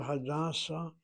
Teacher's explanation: So the word hada accents the first syllable.